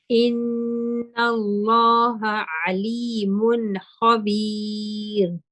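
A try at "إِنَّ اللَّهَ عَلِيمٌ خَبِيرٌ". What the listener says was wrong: The ra is a little bit heavy. I'm not sure if you noticed, but as you move to makhabi, the last part, your tongue moved a little bit. It wasn't very heavy, but it had that hint of heaviness to it.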